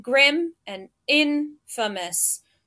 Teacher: Grim is stressed and in is stressed as well. So then famous are the unstressed syllables.